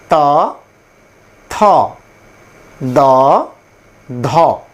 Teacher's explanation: যেমন ট ঠ ড ঢিভাটা একটু সামান্য উল্টে গিয়ে জিহভাটা তালুর সাথে গিয়ে ঘর্ষণ করে ট ঠ ড ঢ উচ্চারিত হবে এরপরের যে ধ্বনি সেটি হচ্ছে দন্ত ধ্বনি দন্ত প্লাস জিভার ডগা অর্থা অর্থাৎ দাঁতের পেছনের অংশে এসে জিভা স্পর্শ করে উচ্চারিত হবে।